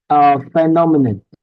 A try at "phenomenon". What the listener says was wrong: Good. Perfect.